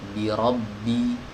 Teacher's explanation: ini jangan sampai saat kita mengucapkan huruf ba ini diiringi dengan sifat hams ya. Karena huruf ba itu tidak ada hamsnya.